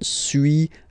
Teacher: So first one, suis, as you've been noticing, you don't pronounce the final S